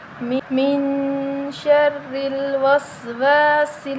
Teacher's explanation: من شر الوسواس، من پہ غنہ کریں گے، را کے نیچے زیر ہے تو ہم را کو باریک پڑھیں گے، موٹا نہیں پڑھیں گے